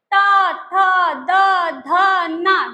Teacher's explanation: टंग हमेशा दांत से टकराती है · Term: त वर्ग